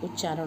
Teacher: इसी तरह दूसरा उदाहरण है उत जमा चारण, यहाँ पर भी त आधा च में परिवर्तित होकर च के अनुरूप हो गया है, तो यहाँ पर भी उच्चारण हो गया है।